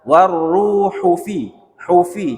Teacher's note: Ru-nya yang panjang, hu-nya enggak panjang. Warruhu fi, hufi cepet dia.